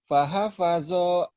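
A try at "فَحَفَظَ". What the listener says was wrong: Nggak ada yang panjang. Nggak ada yang panjang. Jadi kayak orang Judes.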